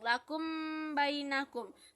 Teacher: Di sana mim bertemu dengan ba maka dibaca dengung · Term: Ikhfa safawi